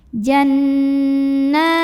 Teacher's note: ketika bertemu dengan ta bunyinya jadi samar-samar, tidak jelas n. Siap-siap ke huruf ta disertai dengungan. Jannatin. Tapi dengungnya sedikit aja ya, karena huruf ta ini makhrajnya masih dekat dengan nun. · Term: ikhfa aqrab